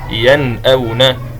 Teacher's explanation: إخراج كل حرف من مخرجه أي النون والهمزة من غير غنة زائدة في حرف النون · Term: الإظهار